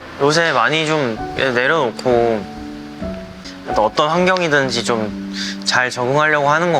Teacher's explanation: it sounds like there's more air leaving his mouth than he's using to pronounce the words. So while it sounds soft and quiet, it's still clear enough that you can hear his pronunciation just fine without looking at the Korean subtitles.